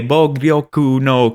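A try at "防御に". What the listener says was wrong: I mean, I think you got it all except you said no instead of ni, but very good.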